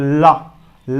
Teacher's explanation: यह पार्श्विक व्यंजन होता है, मुख के दोनों किनारों से इसमें वायु बाहर निकलती है, जिसे हम लोग पार्श्व कहते हैं, इसीलिए इसे क्या बोला जाता है, पार्श्विक व्यंजन।